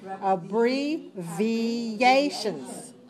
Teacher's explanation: you need your lips for the B, and you need your teeth on your lower lip for the V.